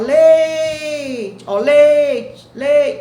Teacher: observe que o é é pronunciado com maior intensidade · observe que o E é pronunciado com maior intensidade. O I quase não aparece. Então, o I é semivogal. O E é vogal e o I semivogal. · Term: ditongo